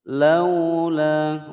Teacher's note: wawu sukun sebelumnya fathah layyin ya, tidak dibaca panjang.